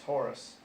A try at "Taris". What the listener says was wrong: Taurus, Taris, not Taurus like a bull. Taurus.